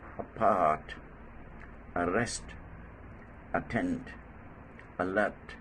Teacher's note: This is the shortest vowel sound in English, and it is also called schwa. Most of the time, this sound occurs in the initial position, as in the following words: apart, arrest, attend, alert.